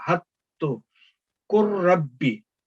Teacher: इस ये इदगाम यहाँ पे हो रहा है हत्तु कुर्रब्बी, यहाँ पे आपने कुल खत्म, लाम साकिन खत्म, काफ ने मुतहरक जो है उसने रा मुशद्दद के साथ मिलके पढ़ना है और ये खत्म, लाम की तलफ़ुज़ की में बिल्कुल आवाज नहीं आनी चाहिए।